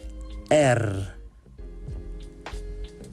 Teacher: The letter R in Dutch is R. It rolls over your tongue.